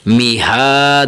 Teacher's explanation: آگے میم زیر می، ہا کھڑا زبر ہا، میہا، دال دو زبر دن، میہادن، میم کے نیچے زیر ہے، ہا کے اوپر کھڑی زبر ہے، کھڑی زبر کو ایک الف کے برابر کھینچنا ہے، میہا، دال دو زبر الف دن، میہادن، ٹھیک ہے، دال دو زبر الف دن، میہادن۔